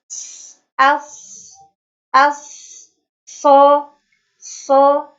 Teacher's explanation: Sifat-sifat yang dimiliki oleh huruf shad yaitu pertama ada hams, mengalirnya nafas.